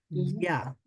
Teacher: আর ইয়া বলার সময় শেষের দিকে অর্থাৎ জিহ্বার শেষ অংশটা কিছুটা তালুর সাথে লেগে থাকে।